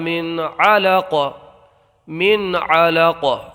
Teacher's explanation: وقف کرنے کی صورت میں قاف کو ہم ساکن کر دیں گے تو قلقلہ کا قاعدہ یہاں پر پیدا ہو جائے گا